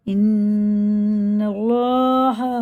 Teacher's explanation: اللہ کا لام زبر کے ساتھ ہے، پر موٹا کر کے منہ بھر کے پڑھتے ہیں